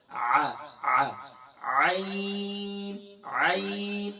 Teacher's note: یہاں حمزہ کی آواز نہیں نکالیں گے بلکہ یہاں ہم عین کی آواز نکالیں گے، اور عین کی ادائیگی گلے کے مڈل سے ہوتی ہے، وسط حلق سے ہوتی ہے